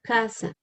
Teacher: for the spanish speakers of colombia we don't have a different pronunciation of a z and s